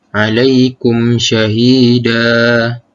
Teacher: dengan menggugurkan bunyi tanwin dan menggantikan dengan sebutan fathah biasa, dan dibaca panjang 2 harakat ketika waqaf sahaja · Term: mad iwad